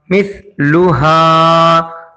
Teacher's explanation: ہا کو کھینچا گیا ہے زبر کے بعد الف آنے کی وجہ سے